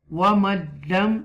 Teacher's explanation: you make idgham without gunna, because this is after a noon sakina, lam.